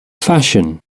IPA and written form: ˈfæʃən (fashion)